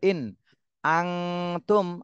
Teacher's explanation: এই নুন সাকিনে ইকফা গুন্না করতে হবে